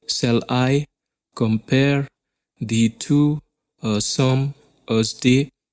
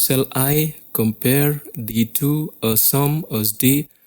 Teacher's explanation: Every second syllable is accented. That means you have to put much more effort in pronouncing the second syllable. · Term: iamb